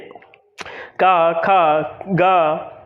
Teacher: आप देखिए यहाँ पर आपकी थोड़ी सी वाइब्रेट होने लगती है जहाँ कंठ है हमारा, क्योंकि ये कंठ उच्चारण आधारित है। ये जो वर्ण हैं वह कंठ से ही उद्भव होते हैं या कंठ की सहायता से मुख से निस्सरित होते हैं।